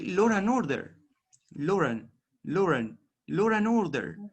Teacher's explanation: you are inserting the er sound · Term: intrusion